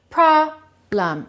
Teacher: Stress the first one, reduce the second one.